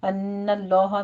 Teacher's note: ان اللہ میں غنہ واجبہ ہے، نون مشدد ہے ، اور آگے لفظ جلالہ کو پر پڑھیں گے، یعلم ما